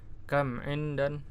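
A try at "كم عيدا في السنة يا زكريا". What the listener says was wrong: Aidan, ya. Ini huruf ya, bukan huruf nun, ya. Coba ulangi lagi.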